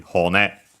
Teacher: hone, accent on the last syllable